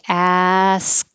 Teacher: it's putting the tongue in the k position that stops the airflow ask and then i move my tongue to the t position